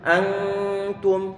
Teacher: Setelah selesai menahan suara gunnah ataupun dengungan, baru kemudian kita tempel lidah kita. Ini adalah pengucapan huruf ikhfa ataupun bacaan ikhfa.